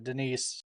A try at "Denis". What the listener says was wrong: Denis, come on, the S is like silent.